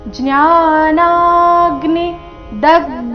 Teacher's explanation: ಜ್ಞಾನಾಗ್ನಿ ನ ದೀರ್ಘ ಬಂದು ಸೌಮ್ಯ ಆಘಾತ ಬರಬೇಕು